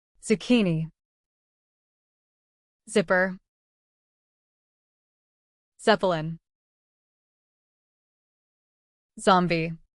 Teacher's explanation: Place your hand on your throat as you say Z and notice the vibration. This happens because Z is a voice sound.